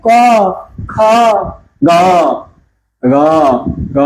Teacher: গতে একটু বেশি কাঁপে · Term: ঘোষ